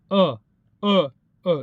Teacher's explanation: जो कि कंठ में आता है इसलिए कंठ वर्ण इसे हम कहते हैं